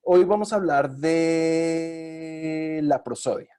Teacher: fíjense cómo ese alargamiento de la E le está diciendo a mi interlocutor, espere, estoy pensando, no me quita el turno, por ejemplo.